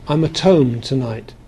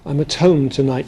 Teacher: what happens is that the H drops out